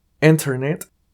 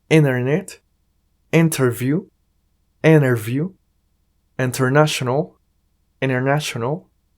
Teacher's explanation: se puede omitir la letra T O la letra d y se aprovecha esa n para que haya más fluidez a la hora de hablar